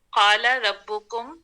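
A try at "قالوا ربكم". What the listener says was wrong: قالو قالو قالا نہیں ہے، قالو ہے.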